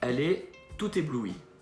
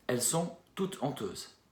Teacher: on peut faire la liaison, puisqu'on est avec une voyelle et un H muet pour débuter l'adjectif